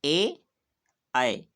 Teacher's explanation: ए, आए, इन 2 वर्णों का उच्चारण स्थान कंठ और तालु। यानी इनका उच्चारण हम कंठ और तालु से करते हैं।